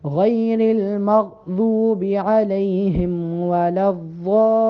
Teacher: ولا الضا پہ جو بڑی مد ہے اس کو 6 الف کے برابر لمبا کر کے پڑھنا ہے